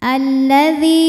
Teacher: alif lam menghadapi huruf Syamsiah yaitu lam maka alif lam tidak dibaca